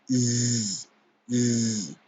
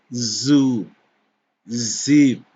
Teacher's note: For these fricatives, the tip of the tongue moves up against the gum line behind your upper teeth. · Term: Alveolar fricatives